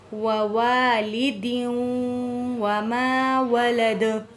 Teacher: وَوَالِدٍ الف خالی اس سے پہلے زبر ہے، الف مد ہے، ایک الف کے برابر کھینچ کے پڑھیں گے